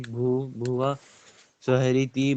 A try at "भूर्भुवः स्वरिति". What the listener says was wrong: भूर्भुवः, भूर्भुवः, आराम से बोलिए, अति शीघ्र बोलने की आवश्यकता नहीं है, हमें शुद्ध उच्चारण करना है जी। भूर्भुवः स्वरिति, हाँ,